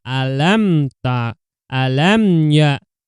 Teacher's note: Idhar safawi itu cara membacanya adalah dengan jelas karena mim sukun bertemu dengan ya.